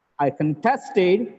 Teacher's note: contested is the verb it gets the stress on the second syllable